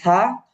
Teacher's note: জিহ্বা সামনের যে দুই দাঁত আছে সেটা হল যে জিহ্বার আগার মধ্যে লাগবে